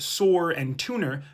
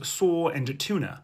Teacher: This is a common feature of non-rhotic varieties of English, which are dialects that drop the letter R. So words like sore and tuner sound the same as saw and tuna.